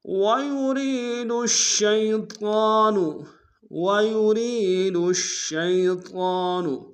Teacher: ان یکفروا به ویرید الشیطان، ویرید الشیطان، ویوری میں را کو یا کے سامنے لیں گے، یا مدہ کے انداز میں کھینچیں گے، دال کو شین کے سامنے لیں گے، شین کے اوپر تشدید زور دیں گے